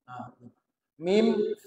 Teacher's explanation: huruf yang keluar dari pertemuan bibir atas dengan bibir bawah diwakili oleh mim.